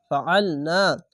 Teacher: ফা আইন লাম জবর আল ফাআল নুন জবর না ফাআল না আইনটিকে মোটা করে এবং গলা চিপে পড়বেন